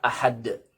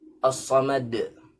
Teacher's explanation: huruf dal merupakan di antara huruf qalqalah yang dibaca memantul ya dan tebal